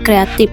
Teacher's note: kesalahannya perubahan fonem F menjadi P